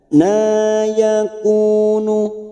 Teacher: fathah berdiri atau Alif kecil di sini dua harakat kita panjangkan